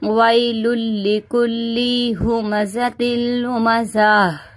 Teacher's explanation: یہاں پہ ہماری سانس ٹوٹ گئی تو ہم نے گول تا کو ہا میں بدل دیا